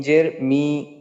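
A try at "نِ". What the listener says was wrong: হ্যাঁ টান যেন না হয়, একটু খেয়াল রাখা, হরকতের উচ্চারণ তাড়াতাড়ি করতে হয়।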